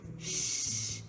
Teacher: people from Portugal tend to pronounce the S in many cases especially when the S comes at the end of a word as the SH sound